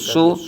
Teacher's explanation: صاد کو پر پڑھیں گے، حروف مستعلیہ میں سے بغیر کھینچے بغیر جھٹکا دیا